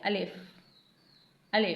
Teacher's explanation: अलिफ मुंह के खाली हिस्से से अदा होता है